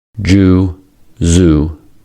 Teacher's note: Za is a smooth fricative sound that is the voiced version of sa. Za can be extended for as long as you like. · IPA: /z/